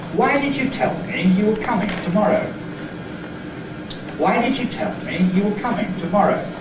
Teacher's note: So there were boundaries between me and you, and between coming and tomorrow. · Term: word group boundary